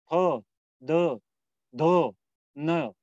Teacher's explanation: हमारी जीवा ऊपर वाले जो दांत है उन्हें हल्के से टच करती है, स्पर्श करती है